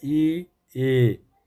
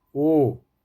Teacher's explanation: अग्र स्वर में जैसे ई बोलते हैं, ई ए, तो देखिए जीभ आगे है, ओ जीभ पीछे हो जा रही है बोलते हुए